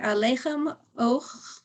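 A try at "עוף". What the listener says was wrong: Oh, it's a fey. It's a final fey. Yeah, good.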